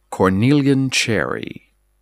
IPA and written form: kɔrˌniljən ˌtʃɛri (Cornelian cherry)